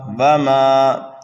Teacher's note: میم کو ہم 1 الف کے برابر کھینچ کر کے پڑھیں گے الف مدہ کی وجہ سے